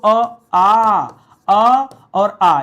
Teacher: ऐसे कौन से स्वर हैं जिनका उच्चारण दोस्तों हम कंठ से करते हैं, यानी बोलते समय हमारे गले से आवाज निकलती है, तो अ और आ, ये दो ऐसे हैं।